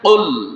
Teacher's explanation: 4 নম্বর মাখরাজ জিহ্বার গোড়া তার বরাবর উপরের তালুর সঙ্গে লাগাইয়া 2 নোক্তাওয়ালা কফ উচ্চারণ হয়